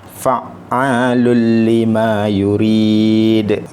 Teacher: Tengok satu lagi contoh, fa'alul lima yurid. Okey, ini tanwin bertemu dengan huruf lam, tiada dengung sebab ini adalah idgham bila gunnah.